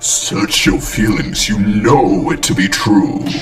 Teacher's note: darth vader puts stress on the word no you know and links know and it together you know it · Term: sentence stress